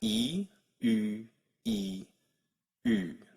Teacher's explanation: The only thing I'm doing is rounding my lips.